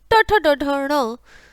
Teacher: मूर्धा और जीभ। ठीक है, इसे बोलते हैं मूर्धन्य। मूर्धन्य, ठीक है, मूर्धा और जीभ।